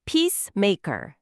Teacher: 강세는 P랑 may에 있고요.